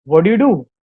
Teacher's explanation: T and D, two different consonants are there. So we need to again remove the first consonant.